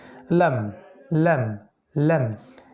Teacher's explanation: লামে আপনার জিহবার অগ্রভাগটা উপরের তালুর সাথে একটু ধাক্কা লাগবে